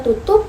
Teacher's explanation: fonem P dalam kata tutup diucapkan secara tidak lepas. Dengan demikian, fonem P dalam bahasa memiliki dua variasi pelafalan.